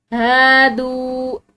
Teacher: दाल इसके बाद वाव साकिन है तो इसको भी थोड़ा लंबा करेंगे